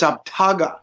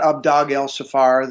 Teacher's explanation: it's actually a T sound as opposed to a D sound